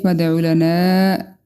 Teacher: میم واحد فادع لنا، تنوین کے بعد فا ہے، اخفا کریں گے، دال ساکن ہے، اس پہ ہم قلقلہ کریں گے